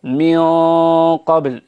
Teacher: إذا رجع لسان المزمار قليلا هنالك يكون موضع تفخيم القاف، فنقول مثلا من قبل بهذا الشكل، ولا نقول من قبل. إذا قلنا من قبل يعني فخمنا الغنة هذه في موضعين اثنين، في رجوع لسان المزمار وفي ارتفاع الصوت إلى سقف الفم